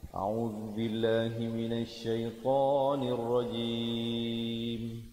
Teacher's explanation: pastikan jelas kelihatan ataupun kedengaran huruf mimnya di akhir jim, dengan kita bentukkan mulut dengan rapat menyempurnakan bunyi mim.